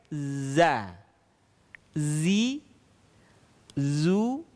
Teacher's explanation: Atau dalam ilmu tajwid ada sifat as-safir dalam melafalkan huruf za. Di mana saat melafalkan huruf za terdengar suara tambahan yang menyerupai dengan suara dengungan tawon